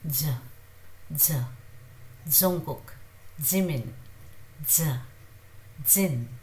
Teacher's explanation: Jungkook, as you see, it's slightly, very softly, a little bit of air comes out of it